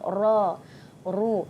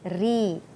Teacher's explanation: Ra ditebalkan bila baris atas, secara umumnya bila baris atas dan baris hadapan kita sebut ra. ru. Tapi baris bawah dia jadi nipis, ri. Ya.